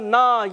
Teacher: और नून अलिफ ज़बर ना, ये हो गया है अलिफ मद्दा। एक अलिफ यानी 2 अरकात की मिकदार खींच कर अदा करेंगे